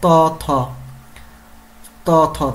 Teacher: থ হচ্ছে দন্ত থেকে উচ্চারিত হচ্ছে